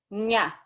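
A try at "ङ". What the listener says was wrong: No, it's nga. You're saying nya.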